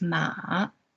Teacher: The third tone is ma, so falling and rising tone, ma.